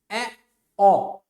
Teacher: उसके बाद आ गया अर्ध विवृत। अर्ध विवृत, जब मुख जो है विवृत से आधा खुलता है, अर्ध का मतलब आधा, आधा खुलेगा तो वो अर्ध विवृत हो गया।